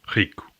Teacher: When at the beginning of a word or doubled, in European Portuguese it's r, similar to a French or German R